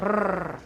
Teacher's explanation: a plain R, which is voiced alveolar trill